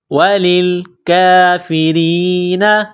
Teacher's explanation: وللکافرین، لام کو لام کے ساتھ ملانا ہے. کاف کے اوپر کڑا زبر ہے، 1 الف کے لمٹ میں کھینچنا ہے، را کو باریک کرنا ہے.